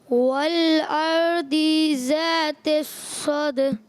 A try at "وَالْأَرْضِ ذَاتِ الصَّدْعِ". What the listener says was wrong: دعات کو نہیں کھینچیں گے.